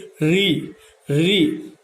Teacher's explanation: पहले तो एक बार जीभ ऊपर करके देखिए, री री, जीभ ऊपर लग करके थोड़ी सी आगे की तरफ आती है